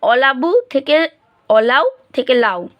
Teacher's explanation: যদি শব্দের আদিতে অবস্থিত স্বরধ্বনিটি লুপ্ত হয় তবে তাকে বলবো আদি সরলোপ উদাহরণ দেখো অলাবু থেকে অলাও থেকে লাউ এখানে আদিতে ছিল